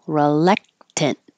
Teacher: the re is not stressed so it's more likely to change to R reluctant and when you finish with the t hold it there